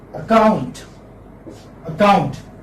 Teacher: There are two syllables. The second syllable is a stress.